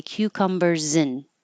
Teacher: In this case, I'm making it even shorter and say cucumbers in. It turns into a little I in